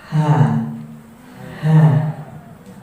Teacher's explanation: Ha, dia ada sifat di situ hams dan rokhawah. Hams itu mengalir nafas, rokhawah mengalir suara.